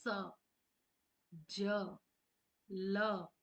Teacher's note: व्स जो कि दांतों की जड़ों से बोला जाता है। जब इनको बोलते हैं इनका उच्चारण करते हैं तो यह हमारे दांतों की जड़ों से निकलती है।